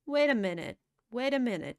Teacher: Он очень сильно сливает. Т практически уходит.